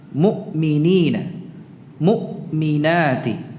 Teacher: Untuk hamzah tidak ada suara lain yang menyertainya. Karena kalau hamzah disukunkan macet ya, dibaca dengan syiddah